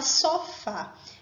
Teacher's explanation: isso não vai mudar em relação a acentuação veja um exemplo a palavra sofá qual é a sílaba mais forte é a última logo sofá é uma oxítona